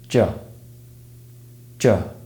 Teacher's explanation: This sound is produced by blocking the flow of air with the tip, blade and front of the tongue behind the alveolar ridge, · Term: J sound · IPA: /dʒ/